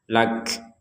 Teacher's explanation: nah di akhir huruf Kaf kita mengeluarkan nafas lakah kalau kita wakaf ya lak